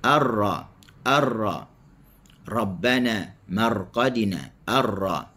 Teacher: huruf ra tetap ada takrir ketika apa-apa keadaan sekalipun